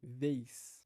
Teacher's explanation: encontra um ambiente favorável pra formação da semivogal i